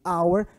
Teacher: O H ele não é pronunciado. Eu chamo de H aspirado. Então a pronúncia ela começa a partir da vogal. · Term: H não pronunciado